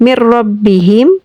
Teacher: Idgham Bilaghunnah. Cara membacanya adalah tanpa berdengung. Ada dua huruf: huruf lam dan ro.